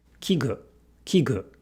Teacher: In 器具, the E is voiced, at least partially, because the following consonant, G, G, G, is a voiced consonant.